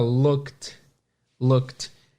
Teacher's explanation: Look, no passado, se escreve look com ed no final. Só que esse ed tem som de T. Então, fica looked.